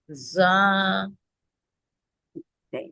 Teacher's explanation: اب زبان کی نوک جو ہے نا, یہ اوپر کے جو سامنے والے دو دانت ہیں اس کے کناروں سے لگائیے جہاں سے ہم بائٹ کرتے ہیں